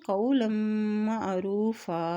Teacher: وقف کرنے کی صورت میں دو زبر جو ہے وہ ایک زبر میں چینج ہو جاتی ہے